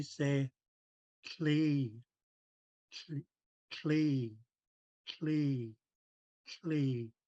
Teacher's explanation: you'll feel the air escaping the sides of your tongue there's a lot more air coming out of the mouth so